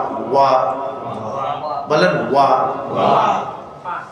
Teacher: ওয়া উচ্চারণ করার সময় দুই ঠোঁট গোল হয়।